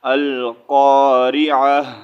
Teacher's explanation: اگر ہم یہاں پر پیش ریڈ کریں گے تو القارعۃ مل، ٹھیک ہے، تو ریڈ کریں گے، لیکن اگر یہاں پر ہم سٹاپ کریں گے، رکیں گے، تو پھر ہم اس کو پڑھیں گے القارعہ، ٹھیک ہے۔ ہاں جی، تا جو ہے اس کا ساؤنڈ ہم چینج کریں گے، اس کا ساؤنڈ جو ہے ہا، لاسٹ میں ہا نکالیں گے، ٹھیک ہے، تا نہیں ریڈ کریں گے، القارعۃ یہ نہیں ریڈ کریں گے، ٹھیک ہے، القارعہ ہا ریڈ کریں گے۔